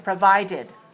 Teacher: Provided has 3 syllables and it's stressed on the second.